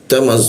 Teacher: Ujung lidah bertemu dengan gigi ya. Ta ada bocor halus